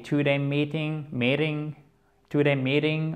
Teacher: le T se transforme quasiment en D en American English